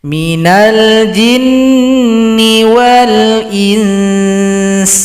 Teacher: Kalau berhenti di sini, berikan dulu hukum bacaan ikhfa, dengungkan dulu setelah samar, baru diberikan vokal huruf sin